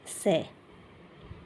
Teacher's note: जो ये स है इसको बोला जाता है दंत से, दांतों से